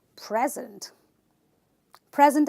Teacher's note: if I'm talking about this as a noun I will then stress on the first syllable